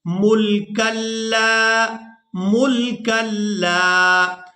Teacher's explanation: یہاں ہم نے کاف کو لام مشدد کے ساتھ ملانا ہے اور اس کے بعد لام کو الف مدہ کی وجہ سے کھینچ کر ادا کرنا ہے